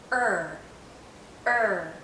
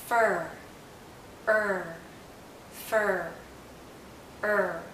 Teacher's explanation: for er the tip of our tongue is actually curled backward and as it curls back the central part of our tongue goes up